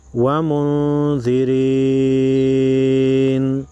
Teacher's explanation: نون ساکن کو غنہ کر کے پڑھیں گے کیونکہ اس کے بعد حروف خلقی میں سے کوئی حرف نہیں، تو یہاں پر اخفاء حقیقی ہوگا.